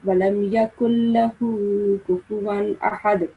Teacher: you don't have to pronounce this kaf from the throat. This is not a thick letter. This is a thin sounding letter. So you have to pronounce this kaf as a thin sounding word.